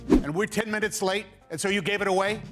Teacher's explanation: the T sound stands between the two vowels and is turned into a D sound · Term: connected speech